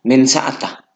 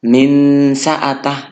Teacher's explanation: ya kalau non mati atau tanwin ini bertemu dengan ini maka dibaca menyembunyikan bunyi nun mati tanwin sekedar 50% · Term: samar-samar